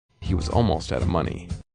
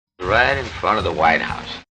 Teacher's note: So the word of may just sound like a very quick [uh]